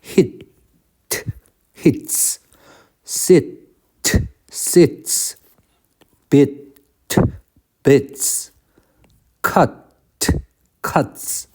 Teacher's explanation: 일단 이렇게, 그건 문법 라인이니까 빼고 발음에서는 동사에 s를 붙이면 그 발음이 유성이면 유성으로 z 발음 나고 무성이면 무성이라서 안 울리는 s 발음 나고